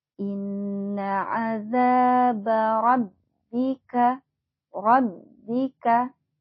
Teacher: di huruf bnya ada tasjid kita harus tekan lagi